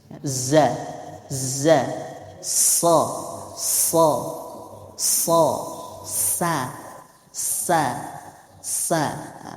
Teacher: tajamnya suara karena ia keluar dari celah yang sempit antara ujung lidah dengan 2 gigi seri atas bawah. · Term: sofir